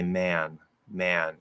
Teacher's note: it's just a little extra through the nose that's all it is um so we do have unofficial nasalized vowels in special cases